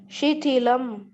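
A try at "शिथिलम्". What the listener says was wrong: Tha is a Mahaprana, and hence I asked you to repeat. So Shithilam, that is the right pronunciation.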